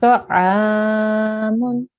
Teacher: we have to make this ayn sound prolong or elongate for 2 seconds or 2 counts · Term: alif mad